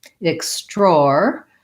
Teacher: This is an example of the EX saying ix with the KS for the X.